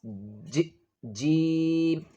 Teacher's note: The middle of the tongue touches the roof of the mouth. Then release.